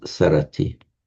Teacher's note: Pali can't begin a word with a sm, so the M drops, becomes sarati.